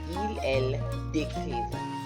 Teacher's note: You notice we didn't pronounce the S this time because décrire starts with a D.